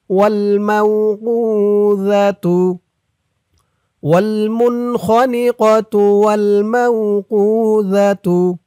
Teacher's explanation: জালের উচ্চারণটা নরম হবে, জিহ্বার মাথা উপরের দাঁতের মাথার সাথে লাগবে জালের উচ্চারণটা করার সময়